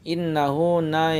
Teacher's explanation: na yang bertasydid itu adalah gunna, ditekan 2 sampai 3 harakat